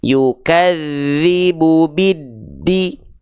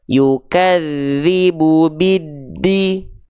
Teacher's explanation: maka di sini dari bi langsung masukkan ke huruf yang ada syamsiyahnya, tanda tasydidnya, yaitu huruf dal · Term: alif lam syamsiyah